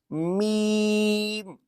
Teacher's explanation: दोनों होठों के खुशकी वाला हिस्सा यानी कि दोनों होठ जुड़ेंगे